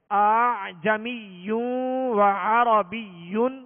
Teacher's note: چونکہ ہماری مشق ہے نہیں تو اس وجہ سے ممکن ہے کہ دوسرے حمزہ میں سختی ہی ہو رہی ہو، حالانکہ اس میں تسہیل واجب ہے، لہذا دوسرے حمزہ میں نرمی ہوگی اور نرمی کے ساتھ اس کو پڑھیں گے